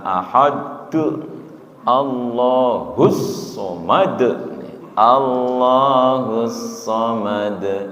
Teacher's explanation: ahad qol-qolahnya enteng, tidak ahad, ahad enteng, ya. Artinya tidak disentak